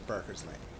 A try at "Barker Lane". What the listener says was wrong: Barker Lane, no S.